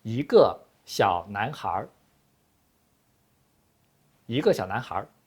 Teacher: People in northern China like to use retroflex final